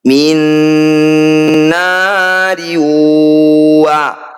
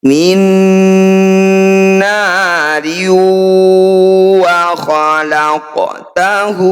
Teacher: Kasrah tanwin bertemu huruf waw, ini juga disebut idgham bi gunnah. Bunyi kasrah tanwinnya langsung masukkan pada huruf waw, kemudian dengungkan. Jadi ketika dengung, bibir kita mencucu.